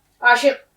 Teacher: تھوڑا سا حلق سے آواز نکلے گی قاف کی